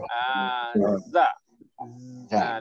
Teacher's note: Dia akan duduk belakang gigi. Dia ada bunyi lebah.